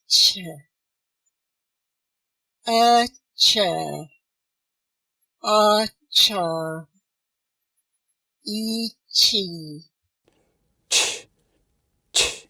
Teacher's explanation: 그래서 그 사이에다가 하는데 치경 쪽을 막았다가 대신에 조금 T처럼 이렇게 혀 끝으로 막는 게 아니고요. 혀 날 부분, 약간 넓적한 부분, 조금 더 넓은 부분으로 막아서 터트리면서 쉬 발음을 같이 해주시면 돼요.